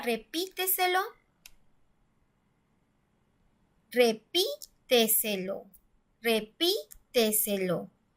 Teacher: Aquí escuchamos que la sílaba tónica está en la sílaba antes de la antepenúltima.